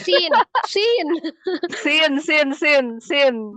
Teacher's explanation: makhrajnya huruf sin itu kan ujung lidahnya tuh terletaknya di antara ujung gigi seri atas dan bawah, tapi dia lebih mendekati ke ujung gigi seri bagian bawah